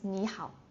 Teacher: when two third tones put together the first one will become a second tone.